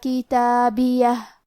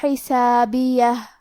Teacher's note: کتابیہ کے آخری میں ہا ساکن ہے، لہذا ہم یہ کلمہ پہ رکیں گے تو ہمیں ہا کو ظاہر کرنا ہے